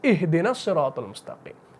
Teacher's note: اعادہ کریں گے تب حمزہ کو پڑھیں گے، وصل کریں گے تو حمزہ کو ڈراپ کر دیں گے